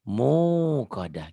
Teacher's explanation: Wawunya itu bukan diteken, tapi panjang karena nggak ada hamzahnya.